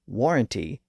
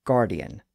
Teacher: the G sound was often substituted at the beginning of the word